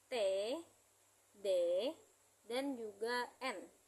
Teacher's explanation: alveolar, yaitu lidah ke gusi atau pangkal gigi di bagian belakang